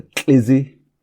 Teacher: So it's an ejective, lateral affricate.